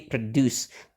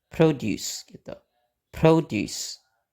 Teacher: karena suku kata yang pertamanya itu nggak ada tekanannya, jadi kita pakai schwa